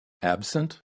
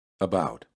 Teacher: the first word has an a sound and the second one has an uh sound